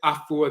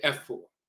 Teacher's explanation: If you have someone who is Afua, which is a Friday born woman, born of the divinity Afi or Afua, that's in the Asante dialect, Kwamu dialect, and so forth. But if you hear someone say Efua, then that's the Fanti dialect. Instead of saying Afua, they say Efua.